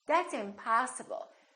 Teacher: we prolong the a in the stress syllable